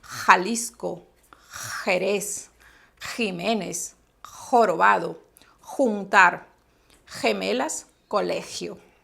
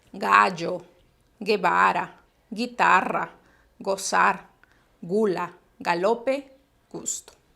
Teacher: tenemos sonido velar o uvular fuerte, aspirado